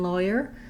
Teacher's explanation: but it because it goes to this glide this yah sound it turns more into the diphthong oy like in boy or choice